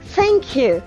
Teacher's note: cara membunyikan thanks ini, ujung lidah menyentuh ujung gigi atas